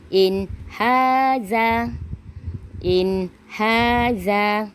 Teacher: Nun sakinah bertemu dengan huruf ha. Kita kena baca dengan jelas, tak boleh dengung.